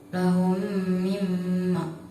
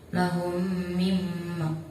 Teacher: Di situ ada mim mati bertemu dengan huruf mim, maka cara bacanya diidghamkan.